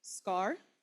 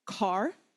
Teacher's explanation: Car, do you see the paper flutter a little bit? Scar, no flutter at all. Car, the paper flutters. So this is pronounced ga, ga, ga.